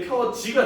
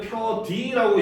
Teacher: 디귿티귿이 모음이랑 만나가지고 지읒 치읓으로 변하는 걸 구개음화라고 하거든요. 여기서는 이제 디귿과 이가 만났는데 현대로 오면 이게 펴지가 된단 말이야.